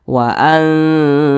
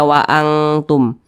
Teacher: dibaca samar dan berdengung akan tetapi samarnya itu dia lebih dominan jadi lebih condong berbunyi n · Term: ikhfa Hakiki